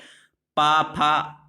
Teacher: जब आप इनका उच्चारण करते हैं तो हमारे जो दोनों होठ हैं वो आपस में जुड़ जाते हैं, यानी पा, फा आपस में टकराते हैं, इसलिए इनको द्विओष्ठी व्यंजन भी कहा गया।